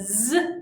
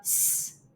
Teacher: the z has the vibrations and the s does not. So that is the difference between voiced and unvoiced sounds.